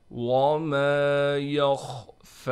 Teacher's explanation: وما یخفی، یہاں بھی خا کو موٹا کر کے پڑھنا ہے، فا پر کڑا زبر ہونے کی وجہ سے فا کو ہم کھینچیں گے